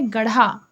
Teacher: यह महाप्राण सघोष मूर्धन्य उक्षिप्त व्यंजन आए। एक हर प्रयोग शब्द निर्माण में मध्य और अंत में होते हैं।